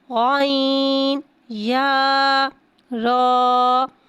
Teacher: غائن حرف مستعلیہ ہے، لہٰذا اس کی آواز حلق سے موٹی ادا ہوئے گی